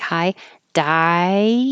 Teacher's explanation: when you say die, your tongue is going very high and ending.